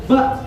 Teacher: Kalau ba dia tertahan, baik nafas maupun suaranya tertahan.